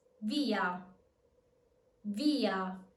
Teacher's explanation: The E in via is stressed, therefore it's strong. So it's not going to be pronounced as a Y, but as a full E.